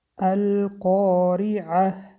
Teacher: قاریعه حرف را با کسره باریک خوانده می شود و در آخر تای مربوطه به حرف ح مبدل می گردد.